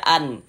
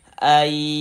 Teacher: Nah, bunyi nunnya, bunyi nun sukunnya masukkan ke huruf ya. Melebur ke huruf ya. Kemudian didengungkan, dighunahkan. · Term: idgham bighunah